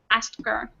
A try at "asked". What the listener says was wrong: instead of pronouncing the t you're just pronouncing the k